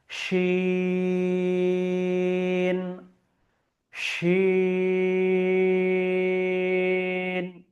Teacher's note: আপনারা দেখতে পাচ্ছেন যে এখানে তিনটি ফোঁটা আছে এবং মানে তিনটি নুক্তা আছে, এবং পার্শ্বে তিন লেখা আছে, অর্থাৎ এটিকেও তিন আলিফ বরাবর পড়তে হবে। এবং তালিবস্যের উচ্চারণ আসবে, মোটা করে উচ্চারণটা আসবে, শিন, শিন, এইভাবে আমাকে উচ্চারণ করতে হবে। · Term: বড় শিন